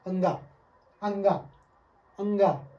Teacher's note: नाक से भी हवा निकलती है और मुंह से भी हवा निकलती है। और इसमें 70% नाक से स्वरों का उच्चारण होता है, जिसमें जैसे अंगा, जैसे नाक का प्रयोग इसमें ज़्यादा हो रहा है। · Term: अनुनासिक स्वर